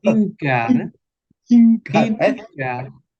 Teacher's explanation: Vemos que la F se pronuncia como una H, como en inglés.